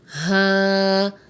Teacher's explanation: ہا حروف حلقی میں سے ہے اور حلق کے نیچے والے حصے سے یعنی آخری حلق سے ادا ہوتا ہے